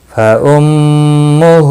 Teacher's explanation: ہا کے اوپر الٹا پیش ہے، ایک الف کے برابر کھینچ کر پڑھیں گے